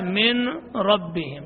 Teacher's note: نون کو را میں مدغم کر دیا ہے تو نون کی کوئی صفت باقی نہیں رہی، تو اس نہ رہنے کی وجہ سے اس کا نام ہے ادغام تام، ادغام تام۔